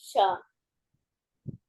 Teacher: we have to touch the tip of the tongue to the roof of the palate, and like a whistle, blow the air from the sides of the lip and say, say Shra.